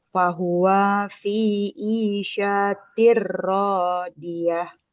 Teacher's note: Karena gak ada alif di depannya jadi enggak boleh dipanjangkan. Radiah langsung dipotong.